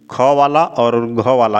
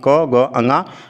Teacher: तो ख वाला और घ वाला ये महाप्राण में आता है, बाकी क ग अंगा अल्प प्राण के अंतर्गत आता है